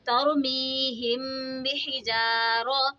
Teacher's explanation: الف سے پہلے زبر ہو تو الف مدہ ہوگا، را پہ زبر ہے تو را کو موٹا پڑھیں گے